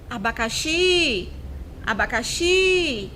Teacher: Qual é a sílaba que ficou mais prolongada? Foi o Xi. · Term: sílaba tônica